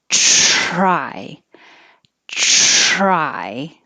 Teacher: it's voiceless you don't have the vibration and it sounds more like a ch